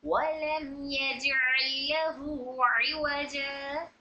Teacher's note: शफवी में बा और मीम के अलावा कोई भी हर्फ आ जाए तो वहां पर इजहार शफवी हो रहा है, तो मीम की आवाज को जाहिर करके पढ़ेंगे